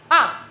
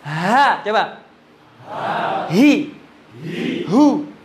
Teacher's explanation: Suara dilepas, nggak boleh nyentak ha itu, harus molor malahan. Lawannya hamzah tadi, hamzah kan suara ditahan.